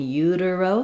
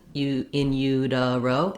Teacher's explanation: So then we go back to, we have another T here that is like another flap in utero. So again, between two unstressed syllables, sounds a little bit more like a D sound